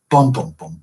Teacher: has three syllables stressed unstressed unstressed